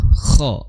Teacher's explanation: seperti ngorok ya, sedikit di tenggorokan bagian atas, atau tepatnya mungkin di belakang pangkal lidah